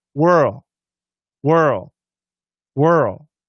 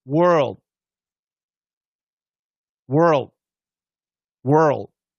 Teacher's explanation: It's a lazy L, and it just fades.